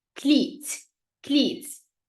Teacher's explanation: the T sound in the end is always a stop sound. You have to say it strongly.